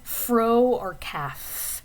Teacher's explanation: So if you make a sound like F, you can see what's happening with my mouth. Your top teeth are touching your bottom lip, and that's being used to kind of partially block or constrict the airflow. So you're kind of still forcing air out, but your teeth are sort of getting in the way, and that's causing that f sound. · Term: labiodental